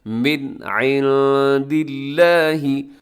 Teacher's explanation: آپ نے یہاں پر اظہار کرنا ہے، غنہ نہیں کرنا، تیزی کے ساتھ اس کو پڑھ دینا ہے، من عند اللہ۔